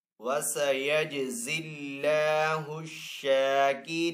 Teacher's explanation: جیم حروف کلکلہ میں سے تو جیم کے اوپر یہاں پہ کلکلہ کریں گے. اللہ عز و جل کے نام کو یہاں پہ باریک پڑھیں گے کیونکہ پہلے والے حرف کے نیچے زیر ہے. آگے یہاں پہ شین کے اوپر کھڑا زبر ہے تو شین کو ایک الف دو حرکات کے برابر کھینچ کر ادا کریں گے. · وقف کرنے کی صورت میں نون کو یہاں پہ ساکن کریں گے